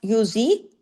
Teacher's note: شیعا، غنہ بھی ہو رہا ہے بیچ میں، شیعا ویذیق، یذیق، قاف زبر قا، لیکن آ کی آواز لمبی نہیں کرنی، الف نہیں لگا دینا